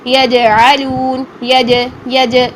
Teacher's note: جیم ساکن میں اس کی آواز میں قلقلہ کریں گے, آواز کو ہٹ کر کے فوراً واپس پلٹ کر لے کر آئیں گے, تو یہاں پر آپ نے قلقلہ کرنا ہے.